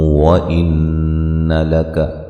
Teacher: نون مشدد پہ غنہ ضروری ہے